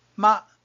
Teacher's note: There is also a zero tone ma which is light thin short and small similar to half a fourth tone